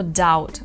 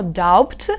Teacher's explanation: у ньому пишеться літера B але вона не вимовляється і це називається Silent Be